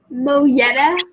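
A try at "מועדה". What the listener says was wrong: So that third letter is an ayin, and it looks like an English Y, but it's a silent letter in Hebrew. Mo'adeh.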